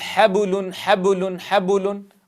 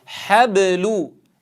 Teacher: نتنبه إلى الباء ألا يشوبها شائبة حركة أو شائبة ضم